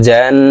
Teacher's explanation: হরকতের বামে নুনের উপরে তাসদি আছে তাই এই জিম নুনের সাথে গুন্নার সহিত পড়বো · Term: ওয়াজিব গুন্না